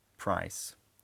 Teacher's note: his price vowel is a slight diphthong, something like price.